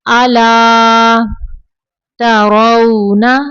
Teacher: تا کو باریک پڑھنا ہے، را کو پر پڑھنا ہے